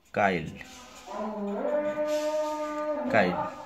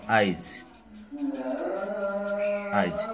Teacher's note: পরের ই বা পরের উ যদি আগে চলে আসে তবে এটা হচ্ছে অপিনিহিতি